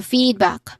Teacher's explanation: It has a stress on the first syllable with a long e sound and a short a sound.